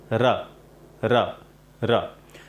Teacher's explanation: ये र का उच्चारण हमें जीभ के अगले हिस्से से करना है और इसे हमें मूर्धा को टच करना है। आप ये समझ के चले कि मूर्धा जो हमारे सामने वाले जो दांत दिख रहे हैं उसके अंदर वाले से थोड़ा सा पिछले वाला हिस्सा जो होता है वो मूर्धा होता है।